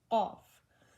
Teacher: The extreme back of the tongue touching the last part of the mouth near the fleshy lobe is makharij of Qaf.